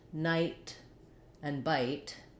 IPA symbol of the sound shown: aɪ